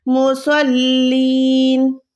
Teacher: سواد کو پر رکھنا ہے اور لام کے ساتھ ملانا ہے